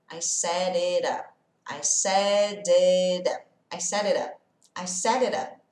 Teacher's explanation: O som de T vai virar um som de D, bem levinho.